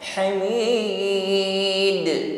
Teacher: Pantulannya di sini kubro, lebih terdengar jelas karena huruf qalqalah yang berada di akhir ayat atau ketika waqaf.